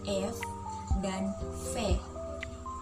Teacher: bunyi labiodental yaitu bunyi yang dihasilkan oleh keterlibatan bibir bawah dan Gigi atas bibir bawah sebagai artikulator menyentuh gigi atas sebagai titik artikulasi misalnya